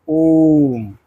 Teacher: प्लुत स्वर के उच्चारण में ह्रस्व से तीन गुना समय लगता है।